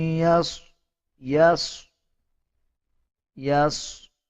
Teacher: صاد کو پر یعنی موٹا پڑھا جائے گا